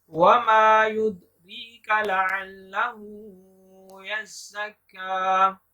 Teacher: उल्टा पेश है और काफ के ऊपर भी खड़ा जबर है और छोटा मद भी है। दाल पर कलकला करेंगे।